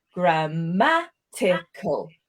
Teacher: We can hear the word stress is on the 2nd syllable there.